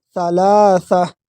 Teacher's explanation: ثلاثہ یہ سا دونوں سا کو نرم پڑھیں گے